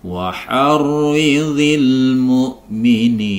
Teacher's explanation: Karena kita berwakaf di akhir penggalan ayat ini, maka bacaan mad tabi'i akan berubah menjadi mad arid sukun, yaitu dipanjangkan 6 harokat